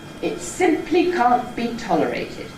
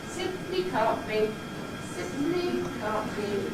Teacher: this first foot, this first little accent group here, ‘simply’, the pitch stays up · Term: Stepping Head